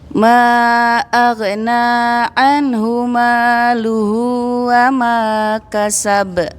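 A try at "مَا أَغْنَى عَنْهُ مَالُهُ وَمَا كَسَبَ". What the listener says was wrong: Baik, ghannya Ibu tinggal dilancarin.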